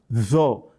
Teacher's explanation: with regard to tho, the back of your tongue rises up because it is a heavy letter